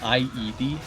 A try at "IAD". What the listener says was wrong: No, you're saying, yeah, IED. IED. You're saying IED. You're saying IED?